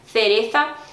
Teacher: uns fazem mais esse som, essa língua entre os dentes mais forte, outros menos, bem suave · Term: TH do inglês